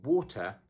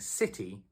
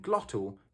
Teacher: That T sound in the middle has been removed entirely and there's a tiny pause there. That pause is the glottal stop.